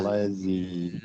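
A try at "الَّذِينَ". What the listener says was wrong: Ladzi. Ladzi. Bukan lazi, bukan z tu. Dia zi. Ladzi. Ladzi tu dua harakat, ada ya, mak asli.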